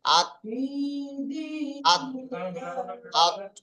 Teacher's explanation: জিহ্বার আগা এবং সামনের উপরের দুই দাঁতের গড়ার সাথে লাগিয়ে উচ্চারিত হয় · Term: তা দাল ত